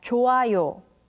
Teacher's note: When the character hyut meets with iung, the character hyut becomes silent